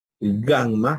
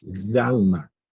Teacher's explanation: ustedes haciendo el ejercicio ahí en su puesto se van a dar cuenta que esa gamma, ese sonido se produce atrás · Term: velares